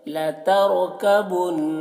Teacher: نون میں غنہ کریں گے